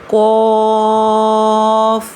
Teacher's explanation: जुबान के पिछले हिस्से को तालू के पिछले हिस्से की तरफ बुलंद करते हुए यानी कौवे वाली जगह पर लगाते हुए मोटी आवाज में पढ़ेंगे। यह वाली काफ मोटी पढ़ी जाती है।